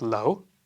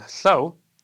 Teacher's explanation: The only difference is that one has 'l' and the other 'l̥'.